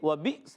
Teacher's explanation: واو کی ادائیگی ہونٹوں کی گولائی سے، وَبِئْسَ البا کو حمزہ سے ملائیں گے، حمزہ ساکنہ ہے، جھٹکا دے کر ادا کریں گے، یاد رکھنا ہے۔